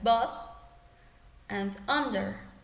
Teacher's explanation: you will form your lips as a letter A in Spanish or a but you will emit the sound uh.